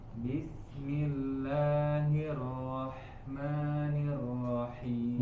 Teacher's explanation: Rahim, dialirkan suara huruf H-nya.